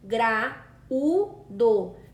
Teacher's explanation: Percebam que o U fica numa sílaba sozinha e se separou do A. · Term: hiato